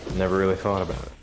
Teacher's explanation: He says thought about it as if it was one word. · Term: connected speech